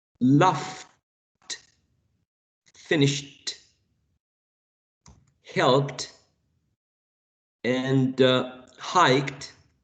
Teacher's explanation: in the case of um loft finished helped and hiked um all of them end in a voiceless sound